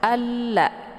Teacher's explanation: Bacanya alla, atau bisa juga disebut dengan idgham syamsiyah karena sifatnya memasukkan, ya. Alla, ya, ditekan a-nya kemudian dileburkan suaranya ke dalam huruf la.